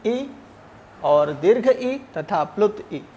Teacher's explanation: ई स्वर जो है, उसका उच्चारण स्थान तालु होता है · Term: तालव्य